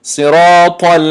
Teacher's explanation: حرف را غوص خونده می شود به خاطر که زبر دارد سرا میگیم سرا گفتن نمیتونیم صراط دیدید حرف طا هم استعلا شدگی است صراط المستقیم.